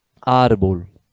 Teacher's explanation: repare que a sílaba tônica não é a última, é a penúltima